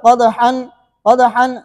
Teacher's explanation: قدحن دال پر قلقلہ ہے